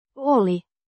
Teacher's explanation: With the stress on the first syllable.